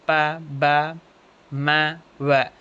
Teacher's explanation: பைலேபியல் பைலேபியல்னா இந்த ரெண்டு lip அப்பர் lip and lower லிப்போட ஹெல்ப்பால produce ஆகுற சன்ஸ்தான் பைலேபியல் சொல்லுவோம் சொல்லி பா்கோ புரிஞ்சிரும் ப ம வ சொல்லும்போது இந்த ரெண்டு லிப்பும் என்ன ஆகும் ஒன்னா சேர்ந்து டப்புனு இதாகி அந்த சவுண்ட் ப்ரொடியூஸ் ஆகும்